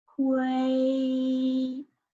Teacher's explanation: because it's a T initial, you have to burst out the air